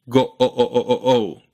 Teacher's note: you just stay on that beginning O Part